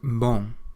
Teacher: You don't pronounce the M on the end of the word, but it does make what's called a nasal sound